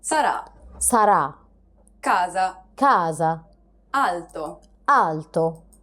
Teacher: It's identical to the A sound in the word father, except that it's held for a little longer.